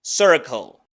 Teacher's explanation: algo que se llama Dark l que es como una l del español pero con la lengua más hacia atrás es un sonido retroflexo Circle y enseguida la palabra game que